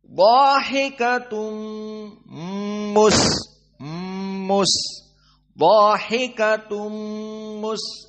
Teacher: dalam keadaan idgham bunah maka harus dari hidung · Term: idgham bighhunah